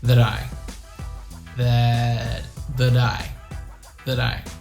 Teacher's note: it's a very fast flat t sounds like a d